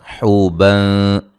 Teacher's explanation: حوبن حو و مدہ ہے. بن نون تنوین کا باریک اخفا ہے